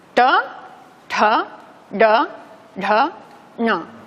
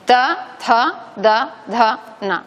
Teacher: Digamos que apunta al paladar, como si apuntara al cerebro, y por eso se llaman cerebrales. Se establece una pequeña retroflexión de la lengua hacia atrás, y de ahí que este sonido en la lingüística moderna se suele denominar retroflejo, los sonidos retroflejos, ¿vale?